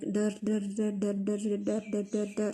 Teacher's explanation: ये जो posture of tongue होता है, इस पोस्चर ऑफ टंग को हम क्या कहते हैं? रेट्रोफ्लेक्स कहते हैं · we call this ra sound as post-alveolar sound. If we have a look at this position, like ra sound, it's a post-alveolar sound because you call this portion of your upper palate as a ridge, and it is pronounced after the alveolar ridge. · यहाँ पे हमारे पास vibration आती है रा sound जब हम create करते हैं